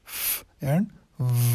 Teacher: جو lower lip ہوتا ہے اور اپر ٹیتھ، ٹھیک ہے، یہ دونوں انوالو ہوتے ہیں. دونوں ایک دوسرے کے قریب آتے ہیں، ٹھیک ہے، اور یہ ساؤنڈز پروڈیوس ہوتے ہیں. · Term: لیبیوڈینٹل